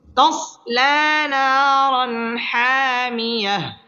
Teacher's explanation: খালি আলিফ মদের হরফ এক আলিফ টেনে পড়তে হবে তসলা নারান তানবিনের বামে হা আসছে হা ইজহারের হরফ গুন্নাহ ছাড়া স্পষ্ট করে পড়তে হবে